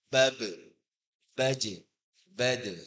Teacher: ba, jim, dal, ini huruf tipis 3 ini. Maka dia dikembalikan qalqalahnya juga tipis.